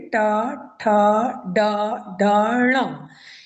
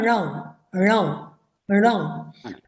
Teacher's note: जो ये ण वर्ण है ये इसका स्थान होता है मूर्धा मूर्धा कहते हैं जो हमारे मुख में कोई भी वर्ण उच्चारण करने में जीव हमारे मुख के अंदर के बहुत सारे भागों को स्पर्श करती है हमारी जीवा तो जीव जब ऊपर ऊपर में जब आप जीभ को उलट कर टच करेंगे तो एक चिकना सा स्थान होता है।